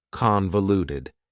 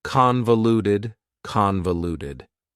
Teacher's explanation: Convoluted also has 4 syllables, and the stress is on the first syllable